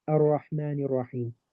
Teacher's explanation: I merge them because they're followed by letters of idgham. So the lam is not pronounced clearly. Rather, we go straight into the next letter. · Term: lam shamsiyah